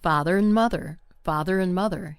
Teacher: The word and, a n d, is often shortened to un or just an n sound